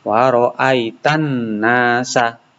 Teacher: Yaitu ada alif lam bertemu dengan huruf nun. Alif lamnya ini dihilangkan, dimasukkan ke dalam bacaan nun. Jadi koyok lamnya ini enggak ada. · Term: Idgham syamsiyah